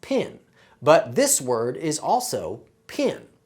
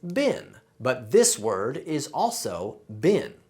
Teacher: for Southern Accents the vowel sounds I and E are pronounced the same way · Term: PIN can merger